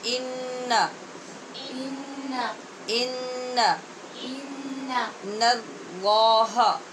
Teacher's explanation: نون کو پر نہیں کرنا، لام کو پر کرنا ہے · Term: نون باریک